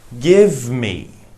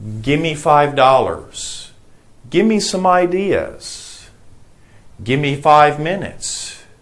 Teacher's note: It means give me, but we don't pronounce the V. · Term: gimme